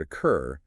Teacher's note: For longer words, the doubling depends entirely on stress. If you take the word occur, the stress falls on the final syllable, cur. Because that syllable is heavily stressed, you need the wall.